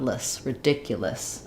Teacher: going almost quickly from the L, almost no vowel, to the S sound